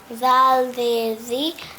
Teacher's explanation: دانتوں کی نوک سے لگنا ہے. ہاں جی، دانتوں کے کنارے سے لگے گی زبان کی نوک، تو اس میں سیٹی کی آواز آتی ہے